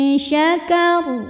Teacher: bunyi nun sukun samar-samar siap-siap menuju makhraj huruf syin disertai dengung jadi saat membunyikan Nun eh kita sudah siap-siap menuju makhraj huruf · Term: ikhfa